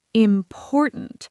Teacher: For example, the word important. The stress is on the second syllable. Important. Not important, not important, important. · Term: stress pattern